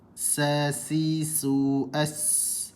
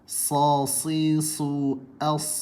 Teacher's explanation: bila kita sebut sin ni pangkal lidah merendah, sad ni pangkal lidah meninggi